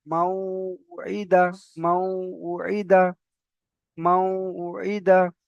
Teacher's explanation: নুন সাকিনের পরে ওয়াও এসেছে। তো এটাকে একালি পরিমাণ গুণনা করে মিলিয়ে পড়তে হবে।